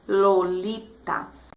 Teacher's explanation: A ponta da língua descendo em 3 saltos pelo céu da boca para tropeçar de leve no terceiro contra os dentes.